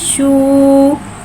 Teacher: शीन के ऊपर उल्टा पेश है, उल्टे पेश को एक अलिफ यानी 2 हरकत के बराबर खींच के पढ़ेंगे और उल्टे पेश होठों की गुलाई के साथ अदा करके पढ़ेंगे